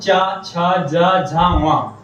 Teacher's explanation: फिर आता है तालु, तालु मतलब कि जो तालु से तलुआ होता है जैसे अपने मुंह में, उसे कहते हैं तालु। तालु से बोले जाते हैं